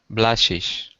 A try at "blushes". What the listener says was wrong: Just a Z sound at the end. Blushes.